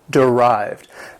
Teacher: This word has 2 syllables. The stress is on the second syllable.